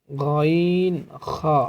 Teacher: হলকের শেষ হইতে গাইন এন্ড খ উচ্চারিত হয়